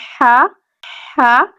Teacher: اس میں عموماً یہ کہا جاتا ہے کہ اس میں ٹھنڈی سانس کی آواز آتی ہے، ٹھیک ہے، جیسے ہم آئس کریم وغیرہ کچھ کھا لیں تو وہ یا ٹھنڈا پانی پینے تو اس طرح کی ساؤنڈ آتی ہے، تو اس میں یہ ساؤنڈ ضروری ہے، ٹھیک ہے، ہا اور ہا، ہا اور ہا، ان میں بھی کیا ہے فرق رکھنا ہے ہم نے۔